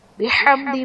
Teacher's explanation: بحمدی میں میم ساکن کے بعد دال ہے تو یہاں پر اظہار شفوی کا قاعدہ ہوگا یعنی غنہ نہیں کریں گے